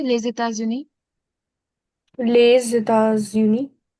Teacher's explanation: So why two times the Z sound? Because of two times liaison.